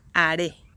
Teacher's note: The stress goes here on this syllable, re, haré. This word has two syllables, and the intonation goes in the last one